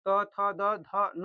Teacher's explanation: दंत से उच्चारण होने वाला कौन सा? दंत मतलब जो हमारे जो दाँत होते हैं उससे उच्चारित होने वाला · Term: तवर्ग